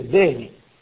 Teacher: in calabro siculo non c'è il ditongo. La V è piuttosto una B e si sente veni.